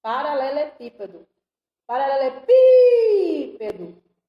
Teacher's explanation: Proparoxítona. A sílaba tônica é a antepenúltima.